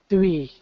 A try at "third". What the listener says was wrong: Okay, get the ending. Third, and then three. So I'm going to say that voiceless th is probably where you're going to want to practice the most.